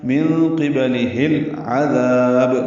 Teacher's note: لام ساکن پہ اظہار قمری ہے، عین وسط حلق سے ادا ہوگا